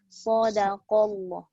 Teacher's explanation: Sad tebal, dal nipis, qaf tebal.